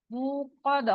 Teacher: मुक़द्दा, क़ा मोटा लफ्ज है, तो इसको इसी तरह अदा करना है। ता रुकते हुए हा में बदल जाता है